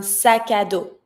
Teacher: I connect, sac à dos, like if just one word.